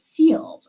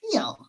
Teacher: But a child who speaks a different dialect might not pronounce the final D sound. They might pronounce it feel.